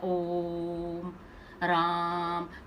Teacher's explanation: प्लुत स्वर तो पलु तो स्वर में क्या है इसमें और लंबा समय लगता है